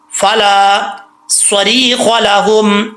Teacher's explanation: لام کے آگے الف ہے، ایک الف کی مقدار اس کو لمبا کریں گے. صاد حروف مستعلیہ میں سے ہے، اس کو کیا کریں گے، پر پڑھیں گے، اور اس کو اپنے مخرج میں لگاتے ہو جب بھی اس کو مخرج سے ادا کریں تو زبان اوپر کی طرف جب تک نہیں اٹھے گی صاد نہیں پڑھا جائے گا.